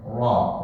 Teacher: Ra kita baca gak terlalu tebal, Ra. Tapi ada lahjah Banten mereka bacanya Ra yang sangat tebal dan itu dibolehkan. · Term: Ra Banten